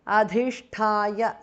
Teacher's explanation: Adhisthaya dha and tha are mahapranah.